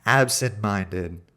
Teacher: it's absent-minded, but said as if the speaker has nasal congestion. Because when you when you have your nose closed and you try to say an N sound, You can't do it because N is a nasely tone.